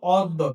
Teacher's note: তাহলে এবার খেয়াল করে দেখো, এখানে আমরা যেটা দেখতে পাচ্ছি কি আছে, অ যোগ দ যোগ জফলা। তাহলে এই দয়ের সাথে যখন আমার জফলা আছে তখন মনে রাখতে হবে উচ্চারণটা হবে দ যোগ দ